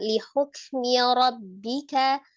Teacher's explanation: Walaupun dia siddah itu hanya menahan ya. Jadi suaranya tertahan tapi tidak dipisahkan li hukmi satu kata.